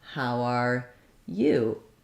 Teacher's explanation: with my rise and fall all happening on that last word and the you being held longer